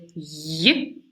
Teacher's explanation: There is only one palatal sound in English, that is the sound y, that is made with the front of the tongue and the hard palate. So the front of the tongue moves up, kind of approach the hard palate without creating any complete closure.